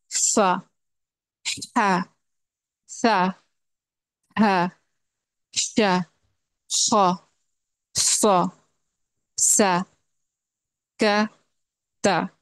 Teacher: ان حروف میں مخرج والی جگہ سے ہوا جاری ہوتی ہے، ایئر فلو ہوتا ہے. اور یہ انہرنٹ کیریکٹرسٹک ہے، یعنی یہ ہمیشہ موجود رہتی ہے چاہے اس پہ کوئی حرکت ہو یا سکون ہو. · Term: ہمس